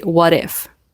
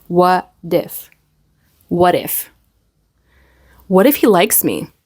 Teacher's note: the t turns into a flap t or a fast D between two words so we have separately it's what if but in spoken English